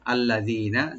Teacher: লাম ওপেন করে পড়বেন, জি একালে টানবেন রাইট দিয়ে, নুন এখানে ওপেন করে পড়বেন, কোনো টান হবে না